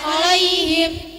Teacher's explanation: ya lin dibaca i tidak e.